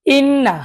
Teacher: নুনের উপর তাশদি গুন্না করা ওয়াজিব